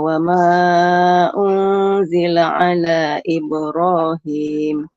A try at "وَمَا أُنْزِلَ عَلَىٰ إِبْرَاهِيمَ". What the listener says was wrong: Lamnya 4 huruf Ibu, kependekan. Wa ma unzila ala Ibrahim.